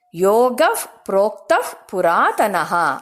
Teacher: ಇಲ್ಲಿ ವಿಸರ್ಗ ಆದ ನಂತರ ಪ್ರೋಕ್ತಹ ಬಂದಿರೋದ್ರಿಂದ ಅದಕ್ಕೆ ಯೋಗಫ್ ಅಂತ ಹೇಳಬೇಕು